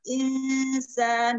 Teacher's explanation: nun mati menghadapi sin, insan, baca di ikhfa